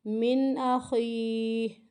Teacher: من کو لمبا نہیں کرنا، ہمیں یہاں پہ غنہ نہیں کرنا، اظہار ہو رہا ہے